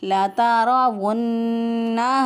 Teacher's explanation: यानी वुन्नहा नून मुशद्दद पे गुन्ना है